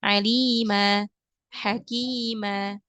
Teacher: panjangnya Hanya dua harakat enggak boleh lebih daripada dua harakat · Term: Mad iwad